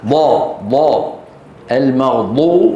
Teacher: دال ما الخطا الخطا انه نطق بها من طرف اللسان وال والصواب ان ينطقها من الحافه من الجانب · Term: حرف الضاد